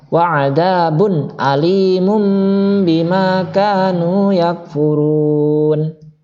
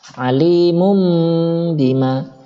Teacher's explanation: Dan cara bacanya menyuarakan atau mengganti nun mati atau tanwin menjadi suara mim dengan merapatkan dua bibir serta mendengung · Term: iklab